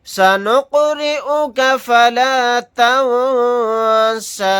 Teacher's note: یہاں پر قاف ساکن ہے، یہاں پر ہم قلقلہ کر کے پڑھیں گے · یہاں پر نون ساکن کے بعد سین آ گیا تو اخفا کا قاعدہ ہوگا. نون کی آواز کو ناک میں چھپا کر اخفا کے ساتھ پڑھیں گے